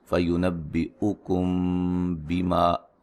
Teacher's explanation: یہاں میم ساکن کا اخفا ہے